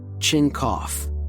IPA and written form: tʃɪn kɔf (chin cough)